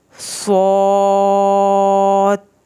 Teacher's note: مد کا آپ نے یہ خیال رکھنا ہے کہ اس کو 3 الف جتنا لمبا کرنا ہے، اس سے نہ کم نہ زیادہ